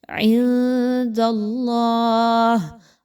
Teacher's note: نون ساکن کے بعد دال کا حرف ہے تو یہاں پہ نون کی آواز کو ذرا چھپا کے پڑھیے